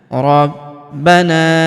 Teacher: Huruf na kita panjangkan empat atau lima harakat karena di depan huruf na terdapat alif yang di atasnya terdapat tanda garis bacaan panjang empat atau lima harakat yang ini ya.